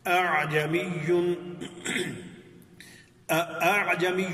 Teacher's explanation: آگے عین بھی واضح ہے، جبکہ آپ نے دیکھنا ہے کہ پہلی حمزہ تو واضح آ رہی ہے اور لیکن پہلی حمزہ کو فوراً عین کے ساتھ نہیں ملایا جا رہا ، بلکہ تھوڑا سا درمیان میں اتنا سا سپیس ہے کہ